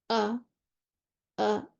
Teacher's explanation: अब देखिए एकदम से आवाज़ बंद होती है, वोकल कॉर्ड्स आपके बंद हो जाते हैं। हमज़ा साकिन आपको ऐसे प्रोनाउंस करना है। · When Hamza is sakina, the vocal cords start off open and come together and close completely